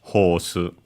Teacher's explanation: with the long vowel, because there isn't R in Japanese, and so we have the long vowel like in received pronunciation in English, horse.